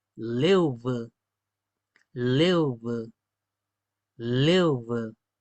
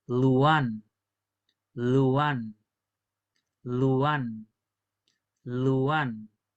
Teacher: Tiene que marcarse la L con los dientes. Leuve. También hay gente que le dice leuve, leuve. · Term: L dental